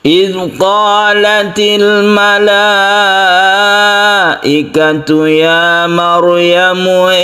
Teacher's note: al malaikatu ini kita panjangkan sebagai mad wajib muttasil. Mad wajib muttasil itu panjangnya 5 harokat atau 2,5 alif.